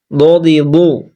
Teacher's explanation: হ্যাঁ দ দ দ দি দু হালকা চিপে দ দি দু জিবের পার্শ্ব কিনারা ওপর কান দাঁতের গোড়ার মাটির সঙ্গে লাগিয়ে উচ্চারিত হয়